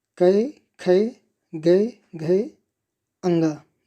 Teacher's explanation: ये सब हमारे कहाँ से? कंठ से निकलते हैं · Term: कंठ व्यंजन